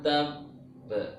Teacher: ada qalqalah yang bertasdid kemudian waqaf, maka sebelum memantulkan itu ditahan